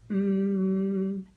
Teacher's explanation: you can hear it going forever if you really want it to, or as long as you can take a breath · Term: continuous